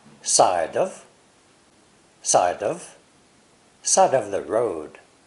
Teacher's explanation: Side and road are the emphasized words, and there are 2 linkings.